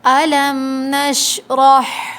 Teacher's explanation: الم میم ساکن پر اچھے سے ہولڈ کریں گے، جب میم پورا ادا ہوگا پھر پڑھیں گے نشرح، ہا حلق سے ادا ہوگا، واضح ہا پڑھیں گے، الم نشرح نہیں پڑھیں گے، را پہ زبر ہے، را کو موٹا پڑھیں گے۔